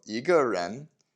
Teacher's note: 个 is 4th tone, but again, it becomes neutral tone when it's a measure word. But because it was originally 4th tone, the E changes to 2nd tone.